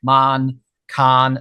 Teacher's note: They're quite open. They're quite flat. There's no tensing in the tongue.